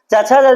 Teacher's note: च छ ज झ इसका उच्चारण आपका तालू से होता है